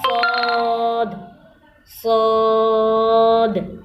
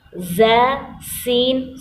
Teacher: زبان اوپر والے 2 دانت اور نیچے والے 2 دانت آپس میں ملیں گے تو زبان کی نوک نیچے والے 2 دانتوں کی جڑ سے لگے گا تو صاد ادا ہوگا، لیکن فرق یہ ہے صاد کو ذرا موٹا پڑا جائے گا، ز اور سین کو ہم باریک پڑھیں گے، سیٹی کی آواز نکلے گی۔